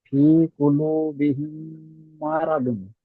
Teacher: মিম সাকিনের পরে মিম এসেছে, তাই মিমকে মিমের সাথে মিলিয়ে গুণা করে পড়তে হয়।